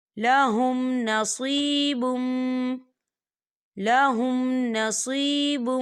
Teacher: تو یہاں پر اظہار شفوی ہو رہا ہے، تو ہم اسے بنا غنّے کے پڑھیں گے، یہاں غنّہ بالکل نہیں کریں گے